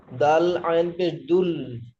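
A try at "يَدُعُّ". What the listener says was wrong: দুল কেন ভাই? আইনের উপরে তাসদিদ রয়েছে মানে কি, তাসদিদ ওয়ালা অক্ষরকে দুবার পড়তে হবে, একবার দালের সঙ্গে মিলিয়ে আর একবার লামের সঙ্গে মিলিয়ে। এবারে লাম হয়েছে, দেখেন এই যে লাম, এই লামের সঙ্গে মিলিয়ে,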